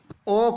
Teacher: और अ कंठ से बोला जाता है, उ ओष्ठ से बोला जाता है, तो ओ और ओ के उच्चारण में कंठ और ओष्ठ दोनों का उपयोग होता है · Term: कंठोष्ठ वर्ण